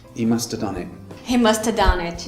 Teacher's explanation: it can go faster than that, where have gets reduced to just a schwa, like muster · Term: connected speech